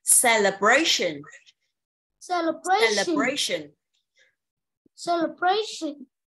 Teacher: Cái L và sơn con đọc nhỏ và yếu thôi này. Còn cái này nhấn một chút xíu này là celebration. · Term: âm không nhấn